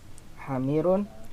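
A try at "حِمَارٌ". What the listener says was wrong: Iya himarun bukan apa tadi antum bilang hamir ya.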